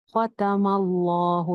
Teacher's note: لفظ جلالہ سے پہلے اب زبر آ رہی ہے تو ہم نے اس کو موٹا کر لیا